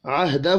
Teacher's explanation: ہا کے اوپر چھوٹی مد ہے، 3 الف کے برابر کھینچ کر پڑھیں گے